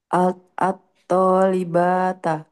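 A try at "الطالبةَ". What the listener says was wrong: Atto libata. Banyak nggak perlu dipanjangin.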